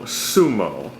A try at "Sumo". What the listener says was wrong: You just that sounded like smo. Where's the U? I think you just said s'mores.